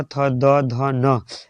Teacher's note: ये बोलिएगा तो जबान में जाके दांत सटेगा। इसलिए इसका आंसर दंत।